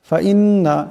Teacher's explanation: এখানে নুনের উপর তসদিদ আছে নুন মুসাদ্দাদকে এক আলিফ পরিমাণ গুন্না করিয়া পড়তে হবে আবার এই নুন এ আল্লাহর লামকে ধরবে নুনের উপর জবর আছে